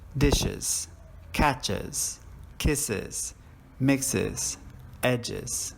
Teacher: sounds for example beds vibes fees and then we'll look at the schwa sound this will produce two syllables